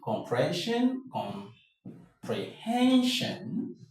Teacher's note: The stress will always be on hen.